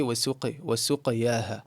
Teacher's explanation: the qaf qalqala, it tends to come out a little bit less full than it's supposed to, and it comes out to leaning towards a kasra.